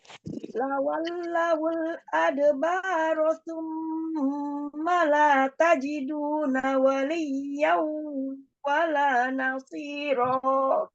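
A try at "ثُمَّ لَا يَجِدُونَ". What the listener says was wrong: Bunda huruf iya-nya terganti kepada ta. Summa la yajidu. Ulangi.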